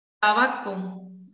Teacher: interruptas, dentoalveolares, tenemos a la T